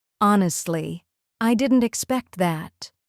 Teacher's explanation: That small pause after honestly makes the sentence sound natural and emotional.